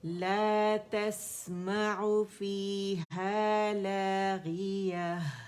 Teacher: لا باریک ہوگا, تا بھی باریک ہے